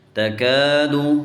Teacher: اس کاف کو موٹا نہیں، تَقَادُ نہیں پڑھیں گے